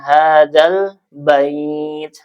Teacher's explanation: Nah ini ada alif lam qamariyah karena ada alif lam setelahnya huruf qamariyah itu ba. Jadi lamnya dibaca ya diizharkan hadal bait.